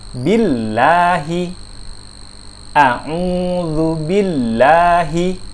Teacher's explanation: billahi itu terdengar ringan, terdengar tipis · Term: lam tipis